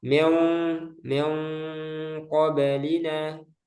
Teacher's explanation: dibaca dengan samar hampir mirip antara suara N dan NG dan mendekati huruf setelahnya